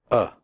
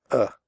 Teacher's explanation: the sound is made with your mouth slightly open and relaxed and without moving your tongue it comes from the throat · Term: schwa